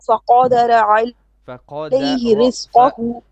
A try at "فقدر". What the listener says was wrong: فقدر را is heavy. you're making the ra flat. So fa is flat, qa is heavy, dal is flat, and ra is heavy. Fa qa da ra.